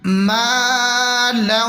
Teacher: یہاں پر ہم میم کو تھوڑا سا کھینچ کے پڑھیں گے الف مدہ کی وجہ سے